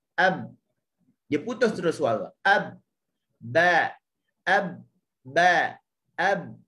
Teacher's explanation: Dia suara huruf ba ni dia bersifat dengan suara tertahan. Kenapa? Kerana pertemuan bibir atas dengan bibir bawah, pertemuan yang kuat. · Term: syiddah